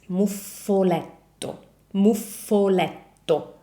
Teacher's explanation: Can you hear how I'm keeping the F and the T for longer?